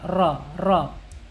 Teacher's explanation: Sifatnya ini takrir. Takrir ini artinya bergetar, ra. Tetapi bergetar ini harus dikombinasikan dengan sifat yang lain, yaitu sifat inhirab.